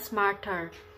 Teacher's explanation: British English Speaker itu bunyi R-nya ini mungkin sedikit hilang atau samar jika berada di akhir kata atau suku kata